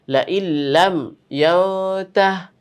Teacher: এই নুন সাকিনের পরে লাম গিয়ে, লামকে গিয়ে ধরবে। লাইল্লাম ইয়ানতাহ, যদি মিলিয়ে পড়ি তাহলে লাইল্লাম ইয়ানতাহি লানাসফাম।